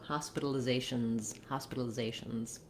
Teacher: when we add an S to make it plural, we add the Z sound.